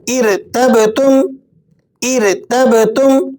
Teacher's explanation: با پہ قلقلہ ادا کریں گے۔ با ان 5 حروف میں سے ہے جن پر اگر جزم آ جائے تو ہم نے ان کو ہلا کر یعنی قلقلے کے ساتھ پڑھنا ہوتا ہے